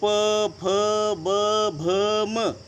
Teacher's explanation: प, फ, ब, भ, म हे ओठ बंद केल्यावरच उच्चार होतो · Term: ओष्ट